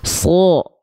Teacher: Huruf yang tebal itu ketika berharokat fathah akan berbunyi vokal seperti O, walaupun bukan sengaja di O kan so, bukan, tapi impact dari tebalnya huruf tersebut.